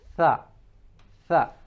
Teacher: Very gently. Tha, the tongue protrudes out between the upper and lower incisors, but it's moving towards the upper incisors